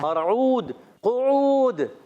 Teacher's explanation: قاف کا مخرج زبان کی جڑ اور تالو کا نرم حصہ. اور عود، قعود، قاف کو موٹا رکھنا ہے، اور عین واو پیش او، عین ادا ہوتا ہے حلق کے درمیان والے حصے سے، اور واو ساکن سے پہلے پیش آ رہا ہے، واو مدہ ہوگا.